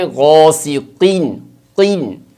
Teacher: البتہ اس کو پڑھنے کا طریقہ یہ ہوگا کہ پہلے جیسے قو کی جو شروع کی والی آواز ہے اس کو پر کریں گے، منہ بھریں گے، اور جیسے ساتھ نیچے زیر کی آواز آئے گی نیچے دبا کر آواز کو باریک کر دیں گے